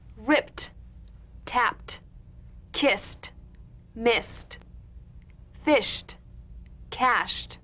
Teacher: ED endings that are really pronounced as T.